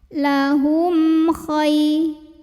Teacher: Berikutnya di sini ada hukum idhar syafawi, karena ada mim sukun yang menghadapi huruf kha. Maka mim sukun ini dibunyikan dengan idhar atau jelas bunyi M-nya